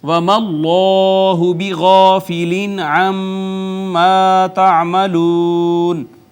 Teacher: اس میں جلالت کا ماقبل یہاں پہ مفتوح ہے، اس کو ہم نے پر کر کے پڑھا